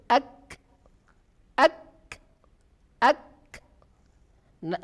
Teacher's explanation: Jadi begini, kalau kaf sukun ak, ak, ak. Suara habis dulu ak, kemudian lepas lidah dan akan muncul nafas yang keluar. Ak, ak. Jadi salah kalau kemudian kita suara tidak tertahan di kaf ya langsung dikeluarkan nafas, itu salah.